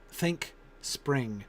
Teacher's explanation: we get that i n sound in the middle which links them together but they still don't rhyme